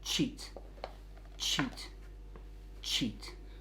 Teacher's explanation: sheet sheet sheet with the ch sound it's very similar except you first allow some air to build up by blocking that narrow gap with the tongue on that ridge behind the teeth so and then you release that pressure that's built up cheat